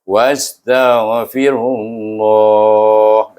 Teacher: Iaitu selepas ru itu bertemu dengan nama Allah, kita baca dia dengan idgham samsi. Ra itu kita masukkan dengan huruf lam dalam huruf nama Allah di sana. Sebab Kita baca idgham syamsi sebab dalam nama Allah itu sendiri ada alif lam.